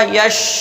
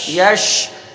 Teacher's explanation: شین کا مخرج ہے بیچ زبان اور تالو اوپر والا، یعنی تالو کا بھی بیچ کا حصہ اور زبان کا بھی بیچ کا حصہ، جب دونوں ملتے ہیں تب شین ادا ہوتا ہے۔